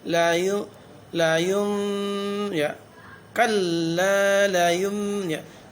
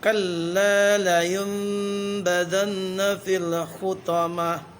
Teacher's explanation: Nun sukun ketemu ba, itu hukum bacaannya iklab, memasukkan bunyi nun sukun ke dalam huruf ba.